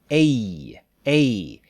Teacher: In Japanese, we make a long sound. In English, the tongue rises up. A. It's a diphthong.